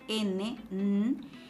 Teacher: es un sonido por donde el aire va a salir a través de las fosas nasales el aire fluye por esa cavidad nasal entonces decimos que es